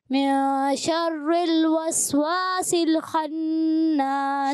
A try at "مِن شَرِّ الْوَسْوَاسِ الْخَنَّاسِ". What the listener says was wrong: شر را کو باریک رکھیں. من شر الوسواس الخناس.